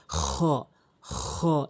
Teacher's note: খলকের শেষ থেকে খ হরফটি উচ্চারণ হয়